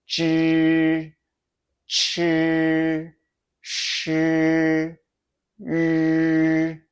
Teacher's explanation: Notice how they sound a bit muffled, like your tongue's filling your mouth? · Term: curled tongue group